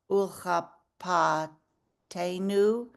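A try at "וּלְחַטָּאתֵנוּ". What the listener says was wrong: t, t, yeah, I thought you said P.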